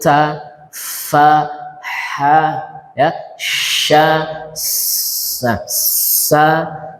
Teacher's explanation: Ya, desisan, ada desis, mendesis bacaannya. Hurufnya dibaca hams, ada udara yang keluar.